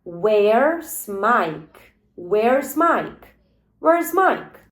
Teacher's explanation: Tu bota muito mais entonação no where e no Mike.